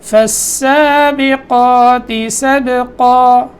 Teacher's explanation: قاف موٹا ہے اور آگے سبقا میں با میں قلقلہ اور پھر قاف موٹا کر کے وقف کرنا ہے